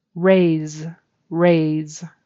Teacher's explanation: That's a final Z sound. Raise. Z is voiced.